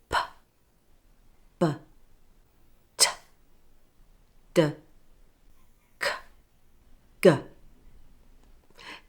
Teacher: Notice how the sounds take your tongue from the front of your mouth to the back.